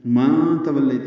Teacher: یہاں پہ اخفا ہوگا، من نہیں پڑھیں گے. فی ماں تولیت، واو کو لام سے ملائیں گے، لیت یا لین مدہ، لین عارض السکون لمبا کریں گے.